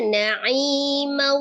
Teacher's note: Jadi 50% suaranya masuk ke rongga hidung ke al-khaisum. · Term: ghunna